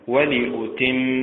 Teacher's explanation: كذلك ولأتم متعل، فحملت متعل، النبر فيها على حركة اللام. ولأتم، النبر فيها على حركة التاء